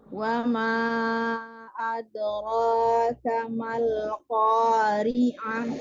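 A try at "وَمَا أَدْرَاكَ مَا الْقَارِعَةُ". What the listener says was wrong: Ko-nya dibuka. Ko dibuka lagi, jangan dibonyokkan.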